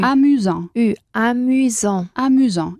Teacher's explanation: la U, que es poner boca de O y decir una I